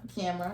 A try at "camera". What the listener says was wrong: You're saying like Camara, like a car, like a Toyota Camara.